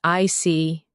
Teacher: When you show understanding with "I see," your tone drops slightly to show calmness.